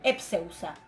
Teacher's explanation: el tema termina con esa dental, le agrego la sigma y la delta en contacto con la sigma cae, sin más consecuencias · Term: Dental ante sigma cae